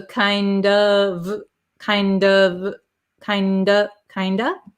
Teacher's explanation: the F which is a V sound disappears and we're left with this O vowel